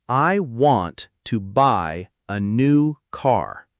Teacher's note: Want, buy, new, car. Those were stressed, louder and longer. I, to, a, those were almost swallowed, very quick and quiet.